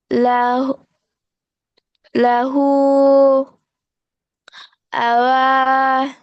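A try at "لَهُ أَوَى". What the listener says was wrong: না না, এখানে দুইটা আছে না? তাহলে দুইটাই টান দিতে হবে, দুইটা খাড়া জবর আছে এখানে। আ। ও। আ। ও।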